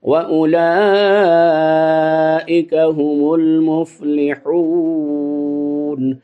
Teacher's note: اسی طرح جس طرح پہلے والا اولائکا ہے تو اس کو بھی اولائکا پڑھیں گے، اولائکا نہیں پڑھیں گے، اور لا کو لمبا کریں گے، یہ مد متصل ہے